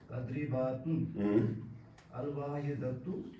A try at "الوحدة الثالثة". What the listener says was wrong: أين واحدة ألا تستخدم النظارة اب شیشہ نہیں لگاتے